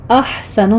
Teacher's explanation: ہا وسط حلق سے ادا کریں گے، ہمس کرنا ہے